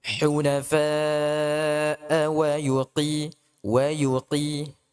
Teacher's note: Ini qaf jangan sampai di tasydid.